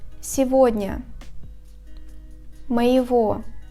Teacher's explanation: In the combinations of ого, его, the letter G is pronounced as the sound V